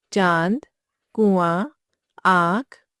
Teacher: अनुनासिक। इस ध्वनि का उच्चारण नाक और मुंह से होता है। इसका ध्वनि चिन्ह अनुनासिक है।